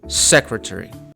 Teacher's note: не secretary, як s з м'яким знаком с, а саме тверда с secretary. >> Secretary.